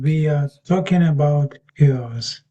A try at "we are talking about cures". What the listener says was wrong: the the beginning bit is a bit weak when you say it. The first couple of sounds are